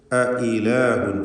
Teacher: അഇലാഹുൻ എന്ന് രണ്ട് ഹംസയും വ്യക്തമാക്കുക